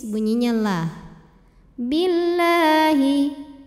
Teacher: lam pada lafaz Allah dibunyikan secara tarqik sebab huruf sebelumnya berbaris kasrah maka dibacanya tipis